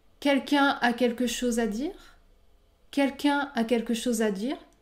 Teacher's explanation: je ne prononce pas le N à la fin du mot quelqu'un